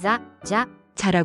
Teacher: 한국어의 자 발음과 비슷하다고 생각할 수 있지만 일본어의 자는 혀끝을 윗니, 뒤쪽 잇몸에 살짝 대고 마찰을 일으키면서 내는 소리입니다. 혀가 너무 강하게 닿아서 혀가 튀어나오거나 바람 소리가 너무 많이 나지 않도록 주의해야 합니다. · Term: 자행 발음